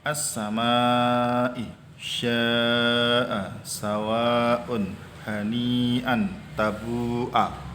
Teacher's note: mad tabi'i bertemu hamzah dalam satu kalimat. Panjangnya adalah 2,5 alif atau 5 harokat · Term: mad wajib muttasil